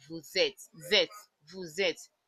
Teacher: the meeting of this S and the vowel makes the S sound like Z